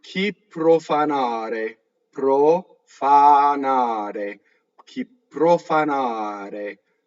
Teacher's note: Notice the R is flipped.